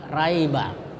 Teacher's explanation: Kemudian raiba itu mad lin, ya, panjang yang lunak. Ya, tidak boleh dipanjangkan, tetapi dibaca lembut